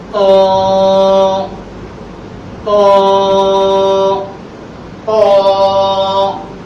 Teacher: এটির উচ্চারণের স্থান হচ্ছে জিহ্বার আগা, সামনের উপরে, দুই দাঁতের গোড়ার সঙ্গে লাগাইয়া একটু মোটা আওয়াজ দিয়ে একাধিক পরিমাণ টেনে বলতে হবে।